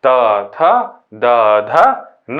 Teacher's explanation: दंतव्य वर्ग, जिसका हम लोग उच्चारण दांत से करते हैं